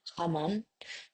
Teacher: a voiceless uvular fricative is common in some parts of Spain. Other regions might use a vo voiceless veer fricative um or a voiceless glottle fricative.